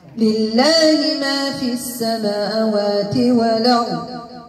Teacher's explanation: عندي اللام ديال اسم جلال المرققة حيت مسبوقة بكسر